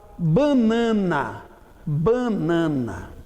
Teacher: o N de banana não está no final da sílaba, está no início de cada sílaba. Então ele é pronunciado normalmente. Ele é contado como um fonema qualquer.